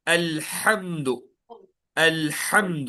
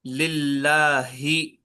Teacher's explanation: الحمد کو آپ تھوڑا جو ہے زور ڈال کے بولیں گے، اور للہ کو آپ اتنا ہی جو ہے تھوڑا سا نرمی کے ساتھ ادا کریں گے